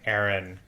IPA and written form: εɹɪn (Erin)